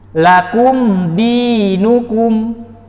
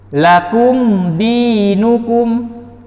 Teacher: Kita perhatikan mim sukun dibaca izhar tanpa dengung. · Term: izhar syafawi